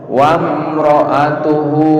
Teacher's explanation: Wam, salah, dimatikan aja mimnya. Wam coba langsung masuk ke ro. Wamro'atuhu hamma, mimnya dibaca gunnah.